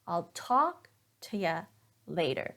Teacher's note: notice that I'm stressing talk and later